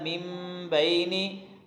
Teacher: وَجَعَلْنَا مِن بَيْنِ أَيْدِيهِمْ، وَجَعَلْنَا نا الف مدہ ہے، مِن بَيْنِ نون ساکن یا تنوین کے بعد اگر با آ جائے تو وہاں پہ اقلاب ہوتا ہے، اقلاب کا مطلب یہ ہے کہ وہاں پہ میم پڑھا جاتا ہے، نون نہیں پڑھا جاتا